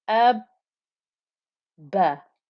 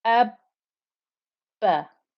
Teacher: You can hear the time I'm spending holding that ba together between my lips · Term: shadda